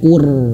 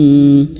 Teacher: Maka huruf ro ini sukun dan menjadi tebal.